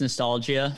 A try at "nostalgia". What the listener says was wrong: You just, you really landed hard on that IA at the end.